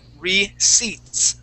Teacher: the P in this word is silent